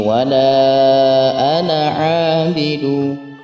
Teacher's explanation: ada lam kembali bertemu dengan hamzah di lain kalimat, yakni mad jaiz munfasil, dibaca 4 sampai 5 harakat. Selanjutnya ada ana di situ yang tidak dibaca panjang karena di huruf alifnya ada harakat sukun di situ, yang artinya tidak dibaca panjang.